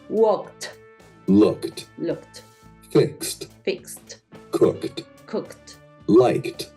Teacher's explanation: recuerda que cuando el sonido es t, como más fuerte es porque termina en una K, termina en una X, porque son sonidos fuertes